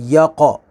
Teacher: آواز کو ایسے ریفلیکٹ کریں گے، آواز لوٹتی ہوئی نکلے گی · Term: قلقلہ